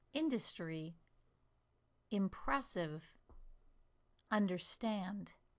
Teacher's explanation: In the first word, I stress the first syllable, the second word, the second syllable